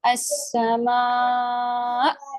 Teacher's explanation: جب آپ یہاں پہ وقف کرتے ہیں نا تو یہاں پہ ایک جھٹکا سا آتا ہے حمزہ میں, وہ بھی نبر کہلاتا ہے. السماء, آواز بلند ہوتی ہے نا یہاں پہ, تو اس بلند آواز کی وجہ سے یہاں پہ بھی نبر ہوتا ہے.